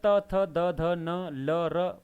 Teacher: दंत से बोले जा रहे हैं त थ द ध न ल र, वो दंत्य वर्ण कहलाएंगे।